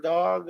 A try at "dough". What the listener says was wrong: Do you say dog? The dough? The dog? Yeah, you said dog.